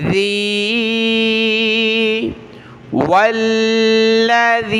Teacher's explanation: اور ذال، ذال پر ہم نے زبان کی نوک دانتوں سے باہر نکالنی ہے، نرمی کے ساتھ پڑھنا ہے۔ ذال کو یا کے ساتھ ملاتے ہوئے ہم نے یہاں کھینچنا ہے، کیونکہ یا کے اوپر یہ مد ہے